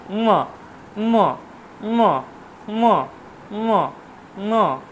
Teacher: ময়ের উচ্চারণ হচ্ছে ওষ্ঠ এবং নাসিকা। ওষ্ঠ এবং নাসিকা, ওষ্ঠ এবং নাসিকা।